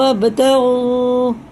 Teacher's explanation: غین حرف حلقی ہے اور با میں قلقلہ ہے